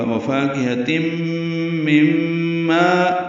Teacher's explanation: پاؤ ہونٹوں کی نہ تمام گلائی سے ادا کریں گے، فا الف مدہ ہے تو حرکات لمبا ہے، کاف باریک ہے، ہاق سے حلق سے ادا کریں گے۔ تنوین کے بعد میم آنے کی وجہ سے ادغام ناقص ہوگا، غنہ کریں گے۔ مم میں پھر ادغام ہے، یہ میم مشدد ہے، غنہ ہے۔